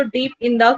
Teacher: so डीप पे जब stress आ रहा, इन द पे स्ट्रेस नहीं आ रहा